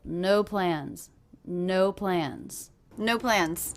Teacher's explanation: plans no plans nothing reduces in this phrase I'm really hearing this is two different stressed words they're both one syllable